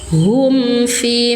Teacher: Hum fi mim sukun bertemu dengan huruf selain mim dan ba. Izhar syafawi. Baca jelas mim sukunnya. Hum fi satu ayunan panjang mad thobi'i zohiri.